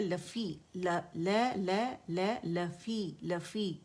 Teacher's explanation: मद तबीई 2 काउंट आवाज़ नीचे जाएगी